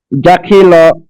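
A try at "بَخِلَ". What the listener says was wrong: এটা জিম না, প্রথম হচ্ছে বা, পরে হচ্ছে খ। বাখিলা।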